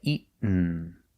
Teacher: You go to a stop T, eat, and you fall to the N.